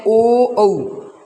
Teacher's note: ओ औ कंठ ओष्ठ्य यानी कंठ और ओठों के द्वारा इसका उच्चारण होता है